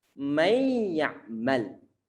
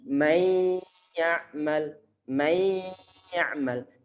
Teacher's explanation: Nunnya mana? Nunnya telah ngelebur ke dalam huruf ya. Telah diidghamkan.